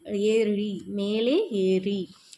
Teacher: இது இடையினை எழுத்தாக இருக்கிறதுனால இடையின ரகரம். இதே நாவின் நுனி மேலெண்ணத்தோட மைய பகுதியை உரசுவதால் ரகரம் தோன்றுகிறது. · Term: வல்லின ரகரம்